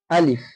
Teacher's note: আলিফ উচ্চারণ হয়ে থাকে মুখের খালি অংশ থেকে